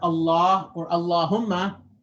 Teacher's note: be light but if you make it heavy a lot right so the back of the tongue is rising to make it heavy